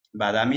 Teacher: termina con A y luego a continuación tiene una M o una B, esa A se alarga.